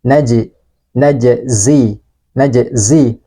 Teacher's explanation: huruf JIM dalam keadaan sukun atau mati maka harus kita pantulkan karena sifatnya adalah Qalqalah